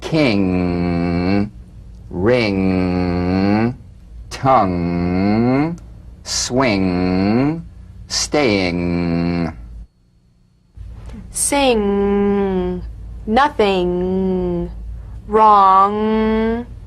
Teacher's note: practice the final ng with no drum beat as the tongue leaves the soft palate at the end of the word sustain the ng in these words king ring tongue swing staying · the back of the tongue in contact with the soft palate back of the tongue to the soft palate vibration coming through the nose feel a twangy nasal resonance · The NG is a voiced, tongue-backed, soft palate nasal consonant. So sing with the back of the tongue in contact with the soft palate.